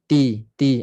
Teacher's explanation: Kemudian ta sifatnya hams. Sifatnya angin, nafas terlepas. Tapi bila dia berbaris, bunyi pergantungan bunyi itu dia dah ada baris, so dia punya bunyi angin tu tak jelas sangat.